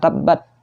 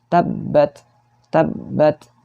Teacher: jangan sampai tidak dihamaskan ya, tidak keluar napasnya. Bukan tabbat, tapi harus ada napas yang keluar ya.